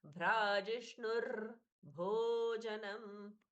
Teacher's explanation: रेफ है वो बीच में मिस हो जाता है, इसलिए उसका थोड़ा सा कंपन लेना चाहिए, वाइब्रेशन